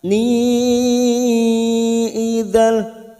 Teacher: fathah tanwin bertemu lam, idgham bila gunnah hanya masuk.